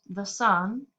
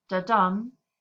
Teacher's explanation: the sun, where the second syllable is stressed, da-dum, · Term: iambic meter